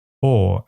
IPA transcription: ɔː(r)